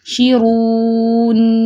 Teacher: نون پہ درمیانی کیفیت میں ان بٹوین آواز کو رکھنا ہے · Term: توسط کی صفت